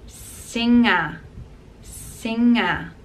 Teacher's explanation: we don't pronounce the G, and it's combination of N and G together, and we pronounce it singer, singer. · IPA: /ŋ/